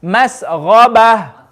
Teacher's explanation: The ghain should be heavy.